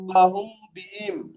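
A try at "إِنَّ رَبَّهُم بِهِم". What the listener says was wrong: হুম, এটা গুণনা করতে হবে। হ্যাঁ, গুণনাটার কারণ হলো মিম সাকিনের পরে বা এসেছে, ওই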